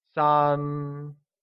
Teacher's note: 3 becomes 三 and is pronounced with a high level tone